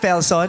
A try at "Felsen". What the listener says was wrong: Felsen. You don't pronounce the O.